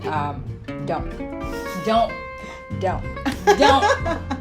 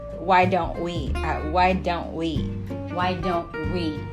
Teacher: Now the second way is to replace the t sound with a glottal stop. So the glottal stop means to obstruct the airflow in the vocal tract.